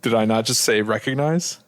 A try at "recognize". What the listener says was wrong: there was a weird emphasis.